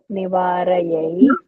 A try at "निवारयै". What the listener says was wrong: There is no visarga. Nivarai.